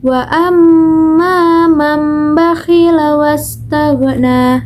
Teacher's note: huruf lam di situ tidak terdengar begitu kuat.